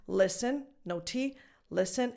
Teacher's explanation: the T in this word is silent. I don't know if maybe you knew this already, but just in case, listen, no T, listen, and the E in the second syllable is just a schwa.